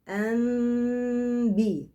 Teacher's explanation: يبقى أنبئهم، قلبت النون الساكنة إلى ميم ساكنة، ثم تلامست الشفتين بخفة بدون كز. أنبي، كأن الميم بتتنطق باستحياء بغنة. في حالة الزمن بتاع التلامس الشفتين بجيب غنة حركتين، أنبئهم، ثم أطلع بحرف الباء بقوة، حرف باء شديد.